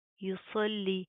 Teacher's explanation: صوت کو پروپر منہ کو پر کر کے پڑھیں گے، موٹا پڑھیں گے، لام کے اوپر تشدید ہے، سختی سے مضبوطی سے جما کر پڑھیں گے۔